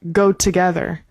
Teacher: I would pronounce the first O in together like a schwah.